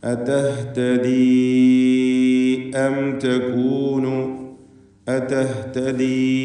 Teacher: അതഹ്തദി അം തകൂനു അതഹ്തദി ഇതിലുള്ള യാഇൻ്റെ ദീർഘം മദ് മുൻഫസിൽ ജായിസ് എന്നതാണ്. 4-5 ഹറക്കത്തിൻ്റെ അളവിൽ അവിടെ യാഇനെ ദീർഘിപ്പിക്കൽ വേണ്ടതാണ്.